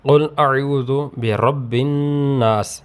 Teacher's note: اعوذ میں واو ساکن سے پہلے پیش ہے، یہ حروف مدہ میں سے ہے، اس کو ایک الف یعنی 2 حرکات تک لمبا کر کے پڑھیں گے۔